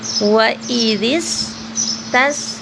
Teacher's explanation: سین سے سیٹی کی آواز آنی چاہیے · قاف کو موٹا پڑھیں گے اور تھوڑا سا لمبا کریں گے کھڑی زبر ہے